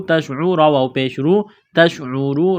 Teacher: را کو موٹا کرنا ہے پیش کی وجہ سے